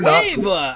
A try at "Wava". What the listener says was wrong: It's not guava, it's Wava.